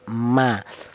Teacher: huruf mim ini berasal dari kedua bibir yang rapat, ma. Kita bilang huruf mim itu melibatkan atau keluarnya huruf berasal dari kedua bibir, baik bibir atas, bibir bawah, ma nempel dulu.